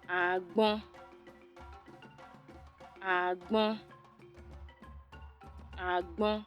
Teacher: That's low tone on the second syllable.